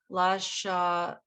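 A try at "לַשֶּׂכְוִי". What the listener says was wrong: Careful, check out the dot above that letter. Hold on, let's look where the dot is. So it's not a shin, it's a sin.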